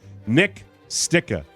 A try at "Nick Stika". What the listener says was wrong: no, it's a Long Eye. It's Nick Stika.